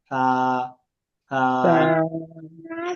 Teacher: ডিম থা, এই যে সেনসিটিভ হরফ, নরম আওয়াজ, বাতাস খুবই কম বের হবে